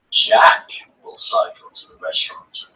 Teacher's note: the word Jack has more melody plus it also has a pause after the word